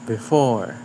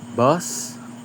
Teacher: O the wedge and swah are likely similar but the difference is the wedge is a stress and swah is unstress. Swah sounds like lazy uh and the wedge sounds like uh but stronger and louder